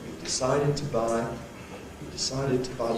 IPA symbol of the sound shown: tə